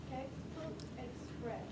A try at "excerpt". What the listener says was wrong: Excerpts. Look at where the P is. It's not before the R. So it would be express. Please make sure that you're reading these letters in the right order. So use your finger to point to them.